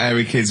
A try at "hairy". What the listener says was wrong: Sorry, I noticed both of you there dropped the H, or the H, or however it's pronounced. So airy kids, hairy. Hairy children, not sort of airy, kind of light-headed or...